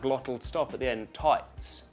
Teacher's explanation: Notice again that glottal stop at the end